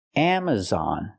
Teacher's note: we have a stress on the first and third syllable